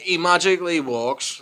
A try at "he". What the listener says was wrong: Why did you pronounce that? E magically walks. You didn't pronounce the H. E.